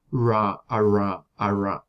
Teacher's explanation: tener la punta de la lengua volteado hacia atrás y hacer la constricción con la cara inferior del ápice de la lengua · en el caso de las róticas retroflejas suele acompañarse también de una labialización